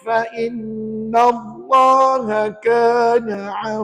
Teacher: hukum tajwidnya adalah ikhfa Hakiki dan ketika membacanya dengung